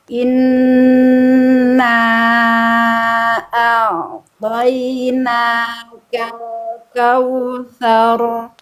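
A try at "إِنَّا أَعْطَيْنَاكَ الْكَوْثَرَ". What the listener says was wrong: Jangan so. Sar. Nah, jadi sa-nya tipis dulu. Kal kautsar. Kal kautsar. Nah, jadi jangan so tapi sa. Kal kautsar. Ketika ain sukun sebelum atau setelahnya dhammah, jangan ke bawah monyong, jangan jadi monyong ain sukunnya.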